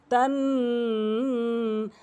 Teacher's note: মিমে বা নুনে, মিমে বা নুনে যদি কখনো আমরা এই কালাওয়ালা চিহ্নটি দেখি তাহলে অবশ্যই আমরা নাকের ভিতরে নিয়ে আওয়াজ করব তান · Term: ওয়াজিব গুন্না